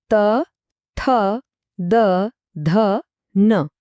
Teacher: આવે છે ત વર્ગ આના અક્ષરો છે ત ઠ ધ ન આ બોલતી વખતે જીભ સીધી દાંતને અડે છે